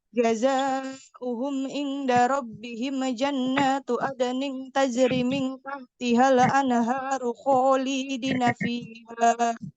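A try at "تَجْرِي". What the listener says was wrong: Tajri, ri-nya 2 harokat.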